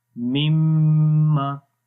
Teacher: So the first meme is a sakin and second meme is mutaharrik. So when we merge or when we enter this first meme into the second, so these two memes become one mushaddad meme. So then we say mimma, like the meme with shadda sign.